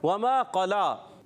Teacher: واو کی ادائیگی ہونٹوں کی گولائی سے ہوگی · ما ایک الف کھینچ کر ادا کریں گے. قلا کھڑی حرکات کو بھی ایک الف کھینچنا ہے